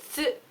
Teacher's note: So su, you say normal su, and then the tsu is just a little bit shorter, and it's got a little itty bitty bit of a T in it, but barely notice it. It's just the way you say it, tsu, like that.